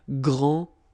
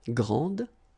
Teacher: And regarding the feminine form, you will pronounce it grande. Okay, don't insist on the final E, but then pronounce this D